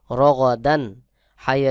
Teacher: র গাইন জবর গ দাল দুই জবর দান রদান এখানে কিন্তু কোন গুন্না হবে না তানভীনের পরে হা এখানে স্পষ্ট করে পড়তে হবে